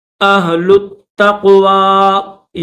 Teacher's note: یہ جو آخر میں یا خالی ہے یا نہیں پڑھی جائے گی۔